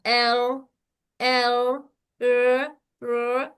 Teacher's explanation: अ एकदम नहीं रुकना है और एकदम अर अर आवाज को जारी भी नहीं रखना है। सिर्फ एक ही तकरार होगा।